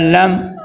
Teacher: جی، اس آیت کے اندر دیکھیں، سب سے پہلے حمزہ ہے، حمزہ زبر لام میم زبر لم عالم، تو حمزہ کو لمبا نہیں کرنا اور حمزہ کو عین میں نہیں بدلنا۔ اکثر یہ غلطی ہوتی ہے، آپ بچے پڑھتے ہیں عالم، یہ عالم نہیں ہے، بلکہ حمزہ جو ہوتا ہے نا وہ منہ کے خالی حصے سے ادا ہوتا ہے۔